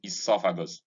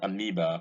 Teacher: the OE in esophagus is short, unlike the OE in amoeba, which is long